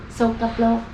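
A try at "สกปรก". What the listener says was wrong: Sokapro. Sokapro. Sokapro. She said sokaplo, but I think it's sokapro, right? With an R?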